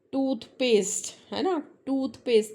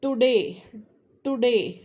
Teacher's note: जो tip of tongue है वहां ऊपर जाके फिक्स हो जाता है और मुड़ जाती है हमारी टंग